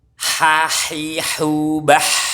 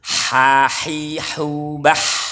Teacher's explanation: Ada aliran suaranya, aliran nafasnya di saat bersukun. Hahihubah. Sempurnakan domanya melecur, hi-nya sempurna i, domanya sempurna u.